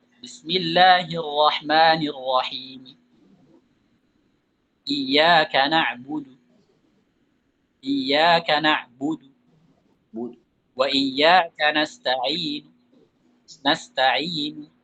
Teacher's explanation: Yang saya lakukan adalah saya baca harokatnya tapi dengan nada yang sangat lemah, dengan suara yang sangat lemah. Saya kurangi nadanya, tingkatan suaranya saya kurangi dan saya cepatin sedikit. Itu namanya waqaf birraum.